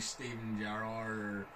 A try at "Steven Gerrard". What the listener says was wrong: Gerrard, you didn't even say his name right, Gerrard. Neither do I, but I know how to say Steven Gerrard. You go Steven Gerrard. You didn't even say the R.